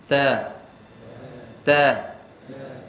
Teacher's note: Ta berbaris fathah, kita akan baca keluarkan sedikit angin. Sikit saja, jangan banyak.